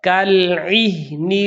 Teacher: بعض لوگ عین کے اندر زبر کی آمیزش کر دیتے ہیں جبکہ ہم نے زیر ہی پڑھنی ہے